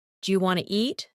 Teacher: Sometimes letters are dropped, like the T in want to, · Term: connected speech